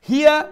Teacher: ছোট হা, অর্থাৎ গলার নিচের অংশ থাকি উচ্চারণ করবো